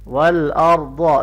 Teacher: را اور ضاد دونوں کو موٹا پڑھیں گے